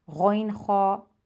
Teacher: حلق کا ابتدائی حصہ ہے وہاں سے یہ 2 حروف ادا ہوتے ہیں